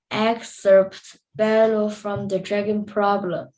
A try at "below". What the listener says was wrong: Okay, and that's below. When you pronounce that word, instead of bellow, it's below.